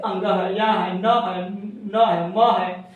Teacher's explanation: इसके उच्चारण में यानी मुख और नाक दोनों का सहारा लेना पड़ता है बिना नाक और बिना किसी एक से आप नहीं बोल सकते